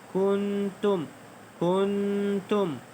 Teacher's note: Itu nun mati bertemu dengan huruf ta. Ikhfa hakiki dengung dengan dua harakat.